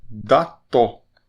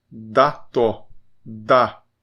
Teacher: A, e uma palavra em chavante de exemplo é dató, que o significado mais comum é festa. E esse A é igual ao português, é como o A de sofá, é um A aberto